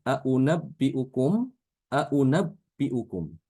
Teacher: Hamzah kedua itu wajib dibaca tashil, yaitu membaca antara hamzah dhammah dengan wawu ya. Contohnya seperti aunabbiukum, aunabbiukum.